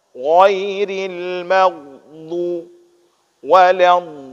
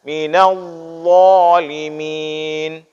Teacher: Kalau dhad ini itu keluar dengan kita baca dengan tepi lidah samping ini. Sedangkan huruf dha ini itu kita baca dengan ujung lidah.